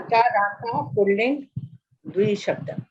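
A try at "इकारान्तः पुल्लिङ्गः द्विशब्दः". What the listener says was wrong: Pullingaha with the Visarga you have to pronounce because it is an adjective to Shabdaha. So Ikarantaha Pullingaha Dvishabdaha.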